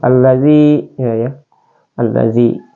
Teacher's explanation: kasrah ya Nah ketika ada Ya Sukun sebelumnya ada huru kasrah maka dia adalah Mad tabi maka cara membacanya itu dibaca Dua harakat